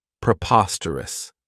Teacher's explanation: this adjective has four syllables and the stress is on that second syllable Preposterous remember that OS has that schah that sound this means